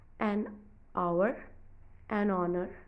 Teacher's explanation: when we say them aloud the h becomes silent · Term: silent h